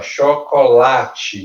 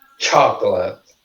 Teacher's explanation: So, the cho é a stress syllable. Cho é a sílaba mais forte.